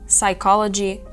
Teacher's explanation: в слові psychology P Silent вона не вимовляється дуже часто люди хочуть казати psychology але це помилка так робити